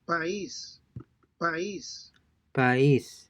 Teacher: the diphthong is broken and the two vowels are pronounced separately